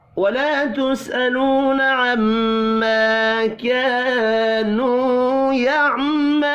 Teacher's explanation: الف مدہ اور واو مدہ کو ایک ایک الف کے برابر کھینچ کر پڑھیں گے۔ یہ بھی الف مدہ ہے، یہ بھی الف مدہ اور یہ واو مدہ اور آخر میں پھر واو مدہ، دو الف مدہ اور دو واو مدہ، چاروں ایک ایک الف کے برابر کھینچ کر پڑھے جائیں گے۔